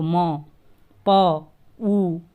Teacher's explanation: हमारे लिप्स का, ओंठों का प्रयोग हो रहा है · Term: ओष्ठ्य वर्ण